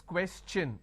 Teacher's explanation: When I have the word question, the TION becomes ch n.